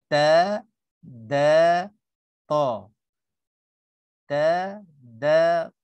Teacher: bagian depan lidah kita ini pergi sentuh gigi depan atas kita